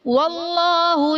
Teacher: اللہ عز و جل کے لام کو پر یعنی موٹا پڑھیں گے